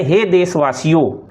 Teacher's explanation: पर जब कहा जाए हे देशवासियों तो उच्चारण में अनुनासिकता नहीं होगी। यानी नाक से जो आवाज आती है वह नहीं होगी।